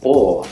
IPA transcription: ɔ